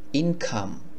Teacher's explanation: ইনকাম, অনেক সময় আপনি দেখবেন আমরা শিখেছি আগের লেসন বা পার্টগুলোতে সিতে ক হয়, কিন্তু এই সিতে ক না বলে ওরা সিতে খর মতো করে উচ্চারণ করে, সিতে খ হয়।